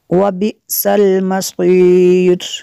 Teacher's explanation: حمزہ ساکنہ ہے، یہاں پہ اس کو جھٹکا دیں گے